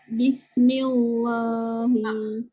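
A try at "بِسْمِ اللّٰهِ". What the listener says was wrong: punya baca tu tebal. M-I-L, millah. Bacaan biasa je.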